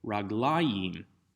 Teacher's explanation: the accent doesn't shift all the way to the end of the word, raglaim, but to the second to last syllable, raglayim. But rather than trying to memorize another accent pattern, simply note again that the word has the same dual ending as all the others, ayim.